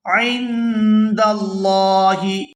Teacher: یہاں لفظ اللہ کے لام کو پورا ادا کریں گے کیونکہ لفظ اللہ کے لام سے پہلے زبر ہے